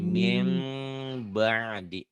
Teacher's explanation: Tanwin juga an, in, un, n. Bunyi n-nya berubah menjadi m, tapi bindeng. Min jadi mim ba'di.